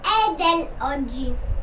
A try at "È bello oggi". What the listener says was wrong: È dell'oggi? that's a B. Remember the B's and the D's, those ones are hard. Sometimes we confuse those.